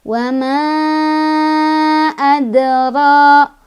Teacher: Ketemu sama hukum qalqalah sugro, sebab ada dal yang sukun dari asalnya, sukunnya sukun asli. Cara bacanya dipantulkan, pantulannya kecil, ngalir ya, karena kita langsung baca ke huruf berikutnya.